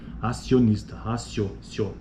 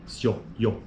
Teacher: Então, por que é uma crescente? Porque o I ele está intensificando a força até chegar no pico que é o O. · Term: ditongos crescentes